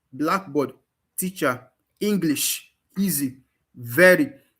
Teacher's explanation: words that are stressed in the first syllable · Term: primary